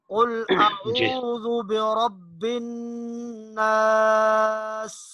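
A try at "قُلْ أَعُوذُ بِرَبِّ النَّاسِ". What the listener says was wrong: कुल, काफ को थोड़ा सा मोटा करना है। कुल अऊज़ु बिरब्बिन नास,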